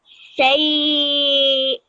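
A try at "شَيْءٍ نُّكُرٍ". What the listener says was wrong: That was good, but I need to hear a little bit longer the noon sound. It was a little bit too fast for me and too short.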